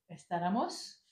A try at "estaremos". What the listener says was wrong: Alors attention, esta. Non, Oui, c'est la prononciation qui m'a gêné. Estaremos. Attention, c'est un E à tout. À tous les verbes. Comeremos, trabajaremos, iremos.